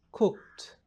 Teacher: D iliyopo mwisho inabadilishwa na kutamkwa kama T